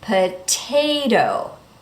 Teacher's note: Notice that the second T changes to that fast D